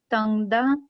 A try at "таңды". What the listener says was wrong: Таңды, не таңда, а таңды. Вот этот звук, ну я... Не совсем да, а вот между вот таңды, вот это придыхание.